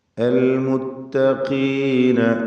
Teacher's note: ഖാഫ് ഇസ്തിഅലാൻ്റെ അക്ഷരമാണ്, എന്നാൽ കസ്റായതുകൊണ്ട് കുറഞ്ഞ തഫ്ഖീം മാത്രം നൽകുക.